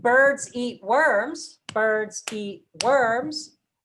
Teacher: All of the claps we're doing are on a word that gets emphasized with word stress. So birds, eat, and worms are all content words that get word stress.